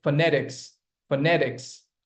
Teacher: But the stress is there on the second syllable itself, okay? It's a 3-syllabic word with stress on the second syllable.